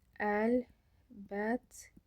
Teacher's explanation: t-lardan biri olduğu kimidir, digəri isə d-ya keçib